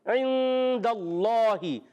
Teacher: ایک الف کا غنہ کریں گے، نون کو چھپا کر ادا کریں گے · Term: اخفا